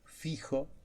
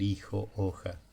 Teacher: Por ejemplo, fijo, ahí hay un desplazamiento fonético, hay un tipo de F que se pronuncia muy suave en el español hasta que se pierde y, y bueno, y, y entonces le ponen un H.